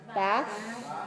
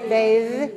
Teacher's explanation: And this one, bath, is voiceless. Bath. And the verb is bathe. That's voiced.